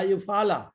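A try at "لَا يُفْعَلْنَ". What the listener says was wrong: ইউফআল, শেষে নুন আছে তো।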